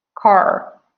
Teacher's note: this letter r is always pronounced